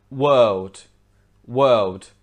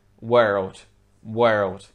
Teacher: world world whereas in american english it would be world world so you can hear that the r is much stronger